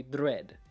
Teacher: We want to have a little bit of a trill go with it.